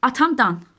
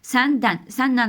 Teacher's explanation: Sonu mu və n samitləri ilə bitən isimlərin qəbul etdiyi çıxışlıq hal şəkilçisi tələffüzdə nan kimi tələffüz olmuş olacaq